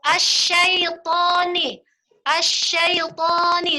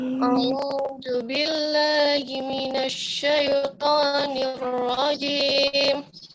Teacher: To-nya masih kepanjangan sayang, cuma 2 harokat.